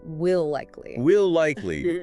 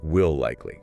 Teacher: A sustained L sound that connects the word seamlessly. No break, not clipped. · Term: A longer L